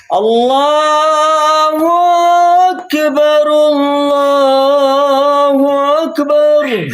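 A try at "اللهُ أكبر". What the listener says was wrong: जोर से पढ़ो इसको। एक मिनट यार, जो हु है ना, हु, उसको जरा ऊंचा पढ़ो।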